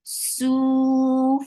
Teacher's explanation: Whenever there is fatha or dhamma on ra, ra will be heavy. E, la, su for dhamma, circle lips, and make it 2 counts long.